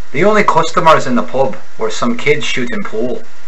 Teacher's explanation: the Irish accent is often described as breathy meaning that it seems lighter than American English